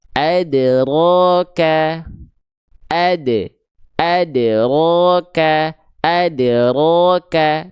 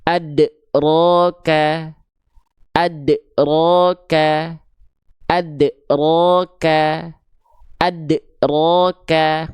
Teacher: diqalqalahkannya atau dipantulkannya tertahan. Jadi, seolah menambah ada huruf hamzah sukun di sini setelah huruf dal sukunnya. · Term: pantulan yang tertahan